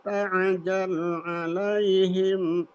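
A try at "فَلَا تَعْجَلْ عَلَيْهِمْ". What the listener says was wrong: Bang kembali, fala ada ain dulu, ada ain.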